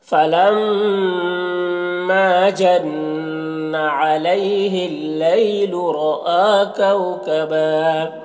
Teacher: कबा यहाँ पर 2 ज़बर पर वक्फ़ करते हैं, तो एक ज़बर के साथ अलिफ पढ़ते हैं